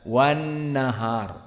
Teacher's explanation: alif lam asyamsiyah wan nahar, maka alif sukut wa kadzalika lam jatuh, tidak dibaca alif lam, langsung kepada nun musyaddadah wan nahar, tidak wal nahar.